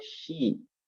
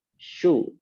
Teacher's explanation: Tengah lidah mengangkat ke atas, ke langit-langit, dan kita hembuskan nafas. Tinggal bagaimana mau fathah, berarti buka mulutnya. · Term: huruf shin